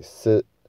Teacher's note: 第四声是什么呢？就是这个轻声，所以我们就把四把它念成像轻声一样